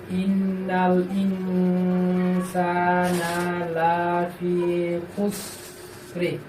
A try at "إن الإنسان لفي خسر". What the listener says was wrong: খুসর খুসরি চলবে।